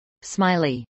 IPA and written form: smˈaɪli (smiley)